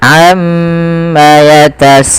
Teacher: kita harus memanjangkan bunyi sa sepanjang empat atau lima harakat dan tidak boleh dikurangi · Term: mad wajib muttasil